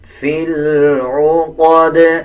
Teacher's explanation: جب دال کے اوپر وقف کیا جائے گا تو دال پہ قلقلہ کیا جائے گا